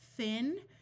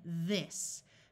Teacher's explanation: Th has two sounds, the unvoiced sound of th, like in thin, and the voiced sound of th, like in this